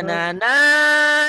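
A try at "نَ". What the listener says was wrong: Bukan. Na. Nah ini pendek.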